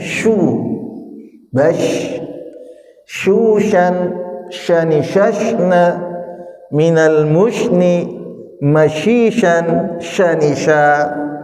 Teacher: Shin itu mengeluarkan hawa, bahkan hawanya menyebar ya, menyebar. Dan dia ada istilah khusus namanya tafasyi.